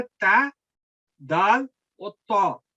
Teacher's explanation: फिर जुबान की नोक ऊपर वाले दांतों के मसूड़ों के ऊपर लगाए जाके, फिर वो 3 हरूफ अदा होते हैं